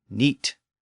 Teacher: over time, that fricative sound disappeared, and the word became neat. And thanks to the great vowel shift around the year 1500, neat became night.